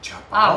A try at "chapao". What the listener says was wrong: Au, de au. Au. We don't say au. You really have to get rid of that, hon. We don't say au. No, really, we don't say au. that's chapao. Chapao. Don't say au because you sound like from a village, a very small village. You do.